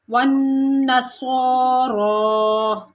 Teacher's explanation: والنصارى، اب سواد بھی پور پڑا جائے گا، را بھی پور پڑا جائے گا، اور دونوں کو برابر مقدار میں کھینچیں گے کیونکہ دونوں کے اوپر کھڑا زبر ہے، جتنا ہم سواد کو کھینچیں گے اتنا را کو بھی۔